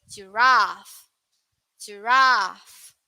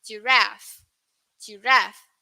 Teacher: in uk the pronunciation is a bit uh longer but in us it's a bit shorter